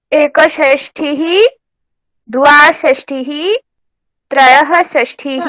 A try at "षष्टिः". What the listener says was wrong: षष्टिः न ठकार नास्ति टकार ट ट